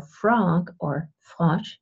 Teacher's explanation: it's a labial dental sound and then if it's and for frog or flush its voiceless